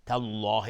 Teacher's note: تالله لفظ جلاله حکمش استعلاء چون قبلش فتحه اومده.